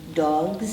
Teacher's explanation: the zed comes from the throat where you were vibrating your vocal folds